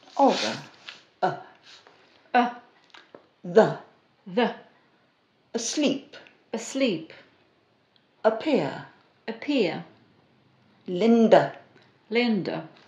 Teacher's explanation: called the neutron or the schwa as in the word the the jaw is half open the lips are relaxed and the middle of the tongue comes up just a little in the mouth but the sound is very short